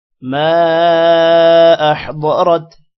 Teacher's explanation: عَلِمَتْ نَفْسٌ مَا أَحْضَرَتْ میم کے بعد الف ہے اور الف پر مد ہے، لمبا کریں گے. ضاد کو موٹا کریں گے اور را کو بھی موٹا کریں گے